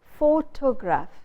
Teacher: We put the stress on photo.